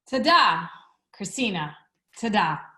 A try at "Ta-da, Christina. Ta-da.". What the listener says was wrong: Just don't let the energy drop at the end. Keep that same, that same energy you came in with. Don't let it fall off.